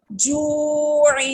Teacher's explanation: اس کو جا وقفن جا، جیم مد کھڑی زیر جی، حمزہ زبر آ، جی آ وقفن جی، جیم واو پیش جو، واو مدہ آ گئی ہے، عین دو زیر عین، جو عین. اب پورا پڑھیں گے تو اس کو 1 فنگر کھینچیں گے واو مدہ کو، اور عین کے نیچے تنوین ہے اس کو کسرہ کریں گے، سوری اس پہ غنہ کریں گے.